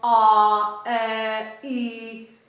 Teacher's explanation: ਉਸ ਤੋਂ ਬਿਨਾਂ ਜਿਹੜੇ ਬਾਕੀ ਸਾਰੇ ਬਚ ਗਏ, ਜਿਵੇਂ ਆ, ਐ, ਈ, ਇਹ ਸਾਰੇ ਨੇ ਜਿਹੜੇ ਇਹ ਗੁਲਾਈ ਰਹਿਤ ਨੇ, ਕਿਉਂਕਿ ਇਹਨਾਂ ਦੇ ਜਦੋਂ ਮੈਂ ਬੋਲਦੀ ਆ, ਐ, ਈ, ਉਦੋਂ ਇਹਨਾਂ ਦੇ ਉਚਾਰਨ ਦੇ ਸਮੇਂ ਤੁਸੀਂ ਖੁਦ ਦੇਖ ਸਕਦੇ ਹੋ, ਆ, ਐ, ਈ, ਇਹਨਾਂ ਦੇ ਉਚਾਰਨ ਦੇ ਸਮੇਂ ਸਾਡੇ ਦੋਨੇ ਬੁੱਲ ਨੇ ਜਿਹੜੇ ਉਹ ਆਮ ਸਥਿਤੀ ਦੇ ਵਿੱਚ ਰਹਿੰਦੇ ਨੇ। ਇਸ ਕਰਕੇ ਇਹਨਾਂ ਨੂੰ ਗੁਲਾਈ ਰਹਿਤ ਸਵਰਾਂ ਦੇ ਵਿੱਚ ਗਿਣਿਆ ਜਾਂਦਾ ਹੈ।